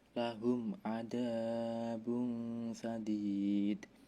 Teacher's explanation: idhar safawi karena ada min sukun bertemu huruf ain, bacanya jelas tidak dengung, dan ada ikhfa karena domah tanwin bertemu huruf dibaca samar.